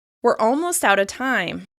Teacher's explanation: You can really hear in this example that I'm not putting particular emphasis on out of. I'm putting emphasis on other words in the sentence.